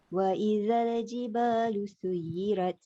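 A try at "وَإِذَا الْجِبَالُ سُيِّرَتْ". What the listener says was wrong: Suyirat sama. Dia bunyi dia bunyi dia macam tebal. Rot. Jangan rat. Rot. R-O-T. Rot. Kalau rat dia jadi nipis.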